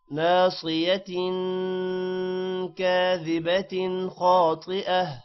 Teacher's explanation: ناصية صاد موٹا ہوگا، تن غنہ ہے. كاذبة تن پر غنہ یہاں پر نہیں ہوگا کیونکہ خا آ رہا ہے حروف حلقی.